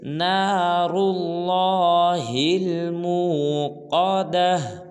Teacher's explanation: اس آیت میں ایسے 3 حرف ہیں جن کو پر ادا کرنا ہے، ایک را ہے، دوسرا لام ہے، تیسرا قاف ہے